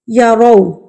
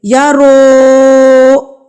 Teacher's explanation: بغیر مجہول کیے پڑھے جاتے ہیں، معروف پڑھے جاتے ہیں، یعنی کہ ان کو ہلایا نہیں جاتا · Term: واو لین